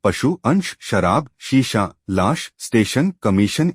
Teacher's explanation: श और स के उच्चारण में भेद स्पष्ट हैं। जहाँ श के उच्चारण में जिह्वा तालु को स्पर्श करती है